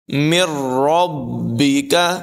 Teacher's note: ادغام بلا غنہ یعنی بغیر غنے کے ادغام ہوگا